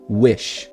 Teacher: aqui eu tenho o som do I grande, que é o som de E. Então ele é quase um som de E mesmo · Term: izão grandão